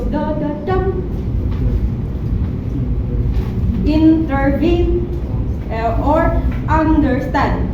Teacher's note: And there's anacas. Two unstressed syllables followed by one stressed syllable.